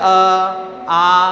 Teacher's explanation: आप देखोगे ध्वनि कंठ से आ रही है